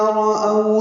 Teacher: او وولین ہے، ہونٹوں کو آگے لائیں گے، معروف طریقے سے او پڑھیں گے، رأو نہیں پڑھیں گے۔